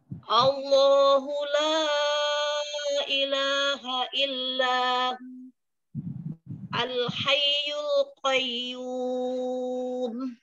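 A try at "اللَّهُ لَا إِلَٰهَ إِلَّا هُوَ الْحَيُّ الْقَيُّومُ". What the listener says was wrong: Umi, huwanya ya. Ketinggalan Umi. Umi, huwal ya. Hayyul qayyum.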